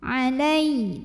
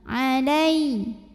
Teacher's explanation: Jadi kalau kita berhenti di huruf tasydid dan huruf tasydidnya itu bukan huruf gunnah, bukan huruf qalqalah ya, selain huruf itu, maka ini kita berhentinya pakai naber. Jadi agak membentak ujungnya, agak menaikkan intonasi ya. Intonasinya lebih tinggi dari huruf sebelahnya. Alai, tekan.